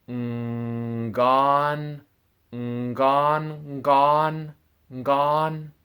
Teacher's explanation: it starts as an ng held which comes from the back of your throat and it glides into a g sound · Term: ng sound, NG sound